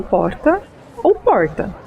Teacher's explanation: a letra R, no fim da primeira sílaba, corresponde a 2 sons consonantais, chamados de róticos